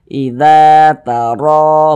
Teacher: Huruf ra yang memiliki tanda baca fathah atau harokat fathah maka dibaca tebal, dibaca tabkhim, sehingga pangkal lisan kita itu naik terangkat ke atas ketika kita mengucapkannya. Ra-nya itu kita tebalkan.